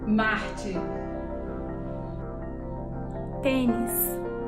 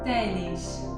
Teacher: the second one has the same s that you have in in Spain Spanish specifically castillian and in Greek it's the retracted s